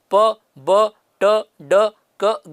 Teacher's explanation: they are formed by means of complete closure of air passage, है ना। मुंह से प्लोजिव साउंड तब प्रोड्यूस होता है जब एयर का पैसेज, एयर के बाहर निकलने का जो रास्ता है उसको एक बार पूरी तरह से बंद कर दिया जाता है और फिर सडनली उसको ओपन करते हैं जिससे कि एयर रिलीज हो जाती है। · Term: plosive sounds